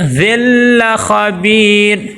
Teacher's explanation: خا کو موٹا کریں گے اور با کے آگے یائی مد آ گئی ہے، ایک الف کے برابر لمبا کریں گے اور مد عارض وقفی بھی کریں گے۔